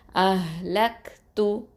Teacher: ஹ சுக்கூனுக்கும் காஃப் சுக்கூனுக்கும் ஹம்ஸ் சிஃபத்தை கொடுக்கணும்